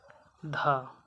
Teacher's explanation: दंत वर्ण है महाप्राण है घोष वर्ण है